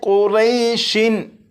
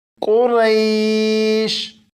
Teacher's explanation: اب اس لفظ کو پڑھیں گے، اور اس لفظ کے آخر میں شین ہے، شین کے نیچے 2 زیر ہیں، یعنی تنوین ہے، اور اس لفظ کو وقف میں پڑھیں گے، اس لیے شین کے نیچے جو 2 زیر ہیں انہیں نہیں پڑھیں گے، بلکہ شین کو ساکن پڑھیں گے